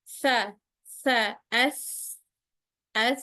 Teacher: pita suara kita pada saat pengucapan huruf tsa ini juga tidak tertutup dia terbuka. Makanya udara yang kita pompa dari paru-paru mudah sekali keluar secara ya mudah saja keluar dari paru-paru kemudian keluar melalui celah yang tidak ditempeli oleh lidah. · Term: hames